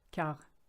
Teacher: Now, if you look at the word quart, it's actually quarter, but with the French phonetic being the way it is, the QU is a K, quart, and you don't say the T, silent letter